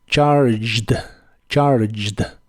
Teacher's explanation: la G de esta palabra se pronuncia como j y la e no se pronuncia